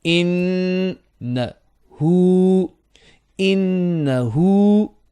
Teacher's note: On the noon, shadda, there is 2 beats of ghunna. So 2 beats of ghunna and 2 beats on the ha with a inverted dhamma.